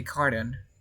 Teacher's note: Remember, RTO, you don't pronounce the T sound.